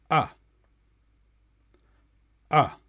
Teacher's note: It's still wide from top to bottom though. This time, your tongue stays in the middle of your mouth in a relaxed position.